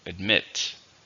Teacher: How many syllables are in admit? 2, stresses on the second.